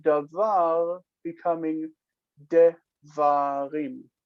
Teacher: the near syllable lengthens to kamatz. It lengthens to the same vowel quality. So patah goes to kamatz.